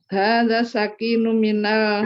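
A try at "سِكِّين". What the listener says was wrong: itu pelan-pelan kafnya itu ada kode tasydidnya sudah dikasih kode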